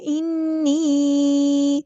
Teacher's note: نون پہ غنہ زمانی ہوگا، ایک الف کے برابر رکنا ہے